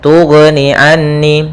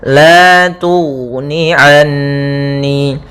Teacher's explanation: Pada lafal ghain yang sukun tidak boleh memantul, tidak boleh tughni anni, tapi dia la tughni anni.